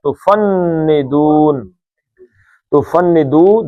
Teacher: تفندو 2 حرکتیں تھیں، یہ عارضی طور پہ ساکن ہوا تو 5 حرکتیں